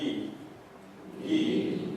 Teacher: the tongue is at its tallest point in the middle